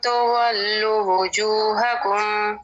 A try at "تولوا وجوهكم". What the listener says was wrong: تولوا لم پیش واو لو ٹھیک ہے واو مدہ ہے یہ ڈراپ ہو گیا ہے تولوا وجوهكم